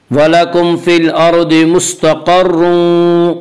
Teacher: क़ाफ को पुर पढ़ेंगे। क़ाफ हुरूफ़ मुस्तालिया में से।